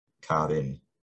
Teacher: In the sentence, the car in the street, he would probably say car in with a tap.